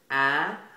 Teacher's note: Ah is a nasal vowel, probably the nasal vowel that sits the furthest forward